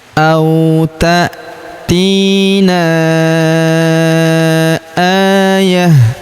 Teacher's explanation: Huruf na kita panjangkan empat atau lima harakat karena di depan huruf na terdapat alif yang di atasnya terdapat tanda garis bacaan panjang empat atau lima harakat. · Huruf a kita panjangkan dua harakat karena terdapat alif kecil